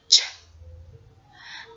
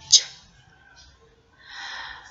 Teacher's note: The sound of ch is the combination of the stop sound of t and the fricative of sh